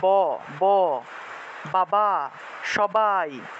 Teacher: বর্গীয় ব যখন আমরা উচ্চারণ করি তখন আমাদেরকে ঠোঁট লাগিয়ে, দুইটা ঠোঁট একত্রে লাগিয়ে ব উচ্চারণ করতে হয়